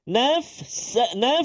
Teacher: Apabila tanwin dia nak beri gambaran dah kepada kita, iaitu menukar suara tanwin tu ataupun suara nun tu kepada mim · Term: iqlab